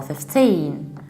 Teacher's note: I live at number 15 so we stress the second syllable